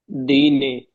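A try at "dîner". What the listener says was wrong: बच्चे ये ड नहीं है, द, दीने, द, दीने, द को छोटे की मात्रा लगी ना, हाँ, दीने।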